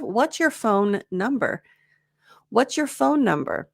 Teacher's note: you were trying to shove two N sounds in there when really you just needed one